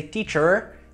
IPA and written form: tiʧər (teacher)